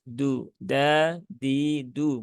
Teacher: huruf Dal itu dia sifatnya tipis ya Dia tidak memiliki sifat istilla maka dia hurufnya tipis